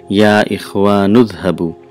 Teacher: when you say Ya Ikhwanuzhabu, Ya Ikhwanu, and Izhabu, there are three words, but when you pronounce it, it sounds like one word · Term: assimilation of two sounds